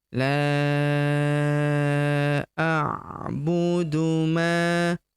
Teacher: Huruf ma kita panjangkan dua harakat karena terdapat tanda alif di depannya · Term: panjang 5 harokat